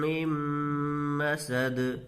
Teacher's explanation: پڑھیں گے، یہاں بھی وہی قاعدہ ہوگا ادغام یرملون کا کہ نون ساکن کے بعد حروف یرملون میں سے میم ہے تو غنہ کے ساتھ ملا کر پڑھیں گے